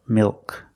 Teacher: The tongue gets fatter at the bottom, it expands, and it goes up a little bit in the back. Milk. The L in milk is also a dark L.